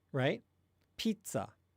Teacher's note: the Z in pizza, it's an affricate. And what that means is you actually stop the outgoing air for a second.